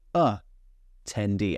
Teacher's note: when we have an 'a' at the beginning of a word, it's quite often a schwa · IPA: /ətɛnˈdiː/